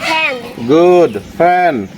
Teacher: উপরের দাঁত আর নিচের ঠোঁট একত্রিত হয়ে এফ উচ্চারণ হয়।